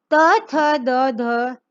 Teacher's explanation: जब हम इनको बोलते हैं हमारे दांत में से आवाज निकलती है।